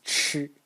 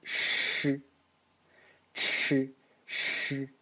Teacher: Now if we go to the left and pronounce the SH sound, so first again the ch, ch, The SH sound is only the noise. So this is ch, and this is sh, ch, sh, with the tongue curled back in the retroflex position. And if we go to the right, this is only the explosion, a slightly voiced explosion of the ch.